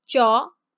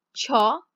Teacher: first one no air second one has air